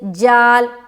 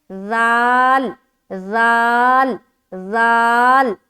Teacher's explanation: ذال حرف کو ادا کرتے ہوئے نہ ہی سخت آواز آئے اور نہ ہی سیٹی دار آواز آئے